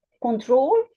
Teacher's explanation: In American English, control, the stress is on the last syllable.